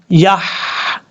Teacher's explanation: یا کے بعد جو ہا ہے یہ ہا بریک ہے, اس کو بھاری ساؤنڈ کے ساتھ نہیں پڑھنا.